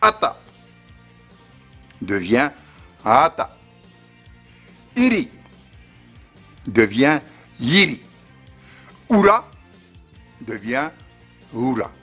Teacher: une voyelle glottalisée comme A de Ata pouvait perdre son état, son occlusive glottale, et se transformer en voyelle mouillée